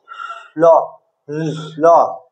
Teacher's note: মিডিলে আটকে যাচ্ছে, আর দুদিক দিয়ে বায়ু, বায়ুটা বের হচ্ছে। এই জন্য লকে বলা হয় পার্শ্বিক ধ্বনি, ঠিক আছে। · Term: পার্ষিক ধ্বনি